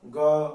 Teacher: ग में प्राण वायु बहुत कम खर्च हो रही है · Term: अल्प प्राण व्यंजन